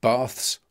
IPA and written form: bɑːθs (baths)